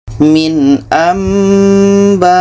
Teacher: Di sini ada nun mati bertemu ba, ini iklab. Bunyi nun kita tukar kepada bunyi mim dan kita dengungkan.